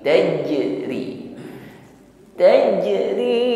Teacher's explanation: Angin tidak mengalir ketika mengucapkan huruf Jim sifatnya syidah kuat tekanan hurufnya dan juga Jah Jar nafasi tertahan aliran nafas ketika mengucapkan huruf